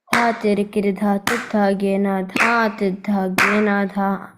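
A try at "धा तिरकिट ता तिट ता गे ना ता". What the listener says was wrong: It's still saying a little ah. I want you to make complete pin drop silent.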